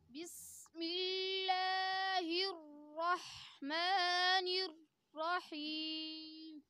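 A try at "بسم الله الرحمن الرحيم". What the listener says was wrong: نررحیم، ہم نے ہونٹوں کو گولائی سے بچانا ہے۔ الرحمن الرحیم، الرحمن الرحیم، یہ غلط ہے، اکثر بچے پڑھتے ہیں الرحمن الرحیم، را ہے، اس کے ساتھ واو کہیں نہیں لگا ہوا ہے۔ الرحمن الرحیم،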